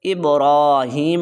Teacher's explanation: را کو لمبا کریں گے، را کے اوپر کھڑا زبر ہے